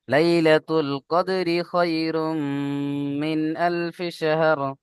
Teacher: র নিচে জের হারাকাত, হারাকাতের পড়াকে তাড়াতাড়ি পড়তে হবে, টান দেওয়া নিষেধ।